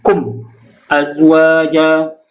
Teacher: Cara baca izhar syafawi ialah dengan menjelaskan sebutan huruf mim sukun, mim tanpa dengung.